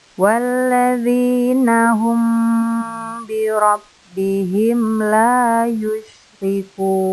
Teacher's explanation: Karena di sini ada mim sukun bertemu ba. Membacanya disertai dengan dengung kurang lebih 4 ketukan. · Yang berikutnya, di sini ada mim sukun bertemu lam. Berarti mim sukunnya bertemu selain mim dan ba. Dinamakan izhar safawi, dibaca jelas. Jadi tidak disertai dengan dengung. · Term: ikhfa safawi